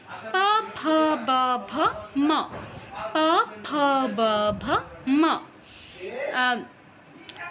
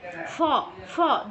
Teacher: আমাদের দাঁত ব্যবহৃত হবে না ফ উচ্চারণের সময় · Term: প বর্গ